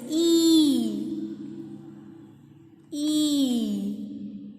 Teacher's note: It is unrounded. It is in the front, and it is in the front and it is close. So we will write unrounded front close.